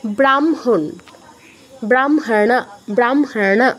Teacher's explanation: হ এর সাথে ম যুক্ত আছে মটা আগে উচ্চারণ করছি হটা পরে উচ্চারণ